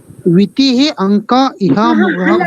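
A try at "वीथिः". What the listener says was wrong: ಅಲ್ಲ. ವಿ ಹರಸ್ವ ಇಲ್ಲ. ವಿಥಿಹಿ. ಎರಡು ವೀನು ದೀರ್ಘ, ಥೀಹಿನು ದೀರ್ಘ, ದೆನ್ ವಿಸರ್ಗ. ವಿಥಿಹಿ, ದೆನ್ ಅಂಕ, ದೆನ್ ಇಹಾಮೃಗಾಹ.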